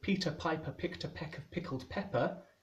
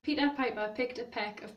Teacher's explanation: the non releasing of intervocalic plosives